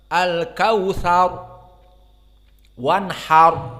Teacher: Jadi ada ra mufakhamah di ujung-ujung di ayat pertama.